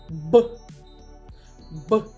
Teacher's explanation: наші губи спочатку при промовлянні зімкнуті а потім розкриваються миттєвим виходом повітря покладіть долоню на горло та промовте звук Б Б працює горло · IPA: [б]